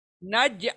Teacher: جیم کے پر جھٹکا آئے گا ایک طریقے سے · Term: قلقلہ